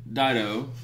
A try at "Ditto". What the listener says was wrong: Dido. It's not Dido. It's Ditto. Ditto. Ditto. It's not Dido. You're adding an extra D.